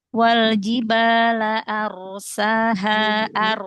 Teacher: ada ro sukun sebelumnya fathah. Maka ini keadaan ro yang dibaca tafhim.